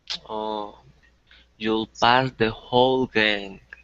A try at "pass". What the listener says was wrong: And remember the word pass, that it's with an S sound, not a Z sound. So not pass, but pass.